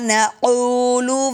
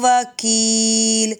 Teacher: نقول کاف موٹا، وکیل کاف باریک ہے